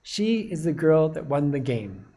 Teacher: But this that is a very short sound. Its weak form is just going to use the schwa sound in it